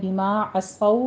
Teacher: عین وسط حلق سے ادا کیجیے اور صاد کو پر پڑھتے ہوئے آگے واو لین ہے، 2 واو اکٹھے مدغم ہو رہے ہیں۔